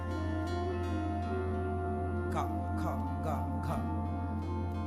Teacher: का कहां से निकल रहा है? कंठ से।